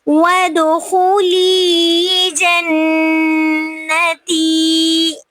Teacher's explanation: ود پہ دال پہ قلقلہ ہو رہا ہے. خلی پہ یا مدہ کیونکہ یا ساکن سے پہلے زیر آ رہی ہے. · خلی پہ یا مدہ کیونکہ یا ساکن سے پہلے زیر آ رہی ہے. جنہ پہ نون مشدد ہے تو یہاں پہ نون غنہ ہو رہا ہے. جنتی پہ یا مدہ ہو رہی ہے کیونکہ یا ساکن سے پہلے زیر آ رہی ہے، تو اس کو ہم نے جو ہے لمبا کر کے پڑھنا ہے.